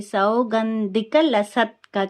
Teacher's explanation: గంధి లో ద అనేది మహాప్రాణ అక్షరం ఒత్తు ఉంది. లసత్ లో త అనేది పొల్లు ఉంది. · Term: మహాప్రాణాక్షరం